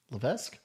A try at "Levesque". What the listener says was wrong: Levesque. You don't pronounce the S.